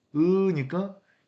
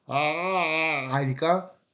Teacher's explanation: 고모음은 으니까 입이 좀 닫혀 있어서 폐모음이라고 하고 저모음은 하니까 개방된다, 개모음이라고 하는 거죠.